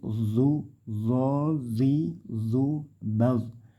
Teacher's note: ujung lidah ditempelkan di dua gigi seri yang atas jadi D do dzi d d B disertai angin terus ditebalkan